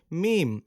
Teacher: দুই ঠোঁটের শুকনা জায়গা থেকে উচ্চারিত হয় মিম